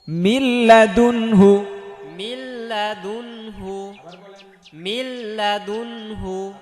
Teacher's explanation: নুন সাকিনের পরে লাম আসছে, সো গুন্না হবে না, দোগমে বেলা গুন্না।